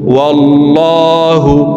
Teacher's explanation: আল্লাহ শব্দের আগের হরফে জবর অথবা পেশ হইলে এই লামকে ল অর্থাৎ মোটা করিয়া পড়িতে হয়। তো এখানে দেখুন আল্লাহ শব্দের আগের হরফে জবর আছে, এই কারণে এই লামকে ল বলে পড়ব।